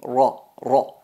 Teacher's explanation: Entonces cuando pronunciamos ar-ra, no hay que dejar vibrar la lengua